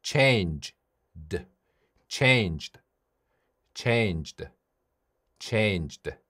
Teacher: 성대가 떨리는 유성음 뒤에 ed가 오면 네, d로 발음합니다.